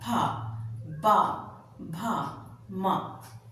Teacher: निचला होंठ अपने आप ऊपर के होंठ का स्पर्श कर रहा है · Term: पवर्ग